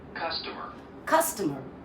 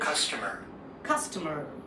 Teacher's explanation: So let's say M Webster >> customer >> customer Now you see here a lot of times uh when we are saying customer sometimes we we stress on the mer that's not correct the correct here is you stress on the first part